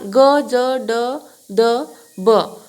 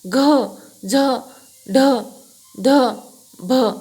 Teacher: सगळ्याला ह चा उच्चार होतोय म्हणजे ते महाप्राण आहेत